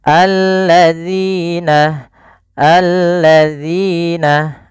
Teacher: Alladzina, alladzina, bukan allazina, tidak. Sering terjadi kesalahan dalam melafalkan alladzina, yaitu menggantinya dengan huruf zai.